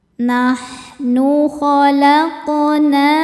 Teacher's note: Huruf qaf sukun hukumnya adalah qalqalah sughra, sebab ada huruf qalqalah yaitu qaf yang sukunnya ini sukun asli dan ada di tengah bacaan. Cara membacanya, qaf kita pantulkan dengan pantulan yang kecil.